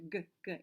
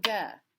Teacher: a voiced stop like g we tend to want to put an uh at the end so we have to be really careful to clip that sound